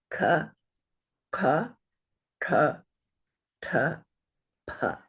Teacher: the first column are unaspirated letters. That means they have no extra breath sound.